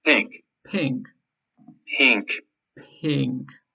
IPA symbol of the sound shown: ɪ